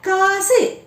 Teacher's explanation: அந்த சு என்ற உகரத்தை ஒலிக்கும் போது ரொம்ப ஷார்ட்டா ஒளிச்சிடுவோம் பொதுவா சு என்ற எழுத்துக்கு ஒரு மாத்திரை இல்லையா ஆனா காசு அப்படின்னு நாம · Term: குற்றியல் உகரம்